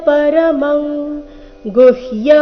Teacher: ಕ ವರ್ಗದ ಅನುನಾಸಿಕ ಅನುಸ್ವಾರದ ಉಚ್ಚಾರಣೆ